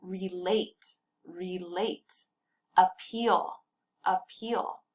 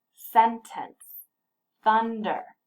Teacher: the first two words have a stressed pattern that goes unstressed stressed